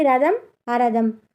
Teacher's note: ముందు ఉచ్చారణలో అచ్చు చేర్చి పలకడాన్ని అజాదిత్వం అని అంటారు. మనకు అచ్చులు అనేవి తెలుసు కదా తెలుగులో, కాబట్టి వీటిని చేర్చి పలకడాన్నే అజాదిత్వం లేదా స్వర ప్రారంభం అని అంటారు.